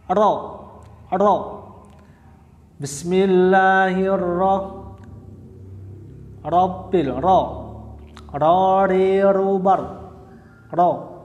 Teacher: satu kali getaran halus di ujung lidah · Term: taqrir